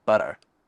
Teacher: It involves tapping your gums just behind your top front teeth. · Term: flapping